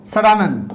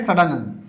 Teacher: इसका उच्चारण करते समय हमारी जीभ मूर्धा से स्पर्श होती है, मसूड़े से स्पर्श होती है, तो ऐसे व्यंजन को मूर्धन्य व्यंजन कहते हैं। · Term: मूर्धन्य स